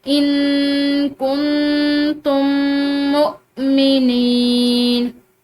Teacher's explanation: जैसे कि ये मीम है और इससे आगे दूसरे हर्फ में भी मीम है, लेकिन एक पहले हर्फ की मीम जो है ये साकिन है और दूसरे हर्फ की मीम जो है ये मुशद्दिद है, तो इन दोनों को आपस में मिक्स करके मिलाकर पढ़ेंगे